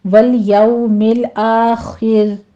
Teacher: آگے آخر میں خا کو پر پڑھتے ہوئے را بھی باریک ہو جائے گی